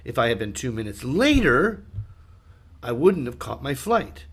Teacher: Note, I'm stressing 2 minutes.